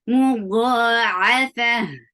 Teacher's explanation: change this sound of ta into ha because you are giving sukoon at the end